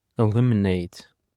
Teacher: The stress is on the second syllable as well. Eliminate.